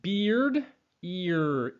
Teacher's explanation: When we say that beard, ear, that second sound, which is the R, we end up taking our tongue and bringing it back. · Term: co-articulation